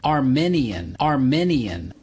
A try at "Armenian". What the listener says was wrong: It's not correct to say Armenian. You have to use the long E. Armenian. The country is Armenia, and people from Armenia are Armenians, and they speak Armenian, not Armenian.